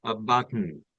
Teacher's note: the N sound is there after T it needs to be pronounced by the nose